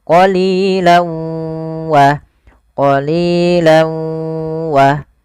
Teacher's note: masukkan tanwinnya ke huruf waw, awalnya qalilan, karena ketemu waw masuk ke huruf waw, tanwinnya menjadi qalilau. Jadi ganti w, karena dia huruf waw itu w identiknya. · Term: idgham bi gunnah